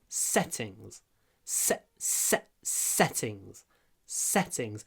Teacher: Длинный «с» и произносим полуголосом, потому что он между двумя глухими согласными.